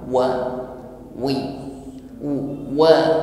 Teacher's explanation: Saya ingatkan kembali dalam mengucapkan huruf waw, maka huruf waw ini keluar dari makhraj syafatan, dua bibir nih, bibir atas bawah dihimpun ke depan